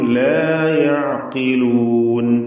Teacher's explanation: യഅ എന്ന് പറയുമ്പോൾ ആയിനിന്റെ ഉച്ചാരണം, വസത്തുൽ ഹൽഖ് തൊണ്ടയുടെ മധ്യം, വ്യക്തമായി ആയിൻ ഉച്ചരിക്കുക.